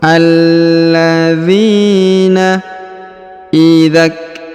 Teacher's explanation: huruf Z dipanjangkan 2 harokat karena di depannya terdapat ya sukun